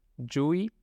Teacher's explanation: Yui es CH, pero con sonido, no tan silenciosa.